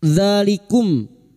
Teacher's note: dzal yang berharokat alif kecil di atas 2 harokat kita panjangkan mad tabi'i. Dzalikum mim sukun bertemu fa idhar syafawi, mim sukun dibaca jelas tanpa mendengung.